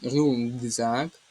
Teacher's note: У слові рюкзак тут глухий приголосний К стоїть перед дзвінком З. І цей глухий приголосний К перетворюється на звук ґ.